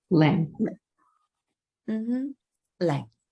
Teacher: our last one is going to be our 4th tone, that very low lang.